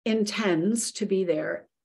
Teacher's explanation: The D that we can feel in the base when it's by itself, tend, intend, is not going to be felt when we add that suffix and pronounce it.